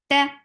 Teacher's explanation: The sound cuts right away, and there is no flow of sound.